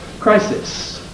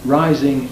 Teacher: Crisis, the I is clipped. Rising, it isn't, because the S, first S in crisis, is voiceless. The S spelling in rising corresponds to a voice instead.